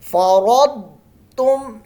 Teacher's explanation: ہے، وقد فرضتم، فرض ضاد میں، اب فرض تم نہیں پڑھنا، ضاد ہے یہاں قلقلہ نہیں کرنا دال کی طرح کا ، سٹل ساؤنڈ ہو جائے گی اور ضاد کو موٹا رکھنا